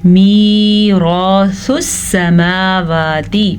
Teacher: میراث السماوات والارض، میم زیر یا، می یا مدہ. را کو پر پڑھنا ہے کیونکہ را پہ زبر ہے